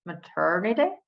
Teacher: That first T is a real T. So it's not a flap T